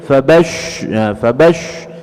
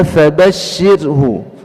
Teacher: shin itu di tengah lidah kita, wastul lisan, ya, tidak dibaca fabashshir, fabash, ya, fabash, jadi huruf shad dia, ya, seperti itu. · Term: huruf shin